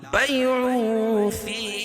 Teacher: حروف اخفاء کے 15 حرفوں میں سے فا ہے، تو یہ ناک میں آواز کو چھپا کر پڑھیں گے. بیع فی یا مدہ ہے.